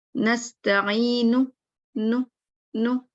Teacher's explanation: اس میں بس نون کے شروع میں غنہ کی آواز آئی, نو, اور پھر بادی کی.